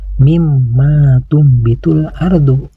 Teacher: ardu mim bakliha pada bacaan ini ada huruf mim yang bertasdid huruf mim yang bertasdid ini harus dibaca guna yaitu dengung ke hidung panjang dengungannya sekitar 1 Alif setengah atau tiga ketukan dan selanjutnya